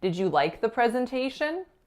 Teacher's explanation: in North American English, to stress the word like actually makes it a non-neutral sentence · by stressing like, the verb, rather than that final noun, presentation, we're actually bringing certain assumptions to the table